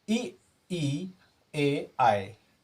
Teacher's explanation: ई ए आए, ये अग्रस्वर हो गए, जिह्वा के अग्रिम भाग से बोले जाते हैं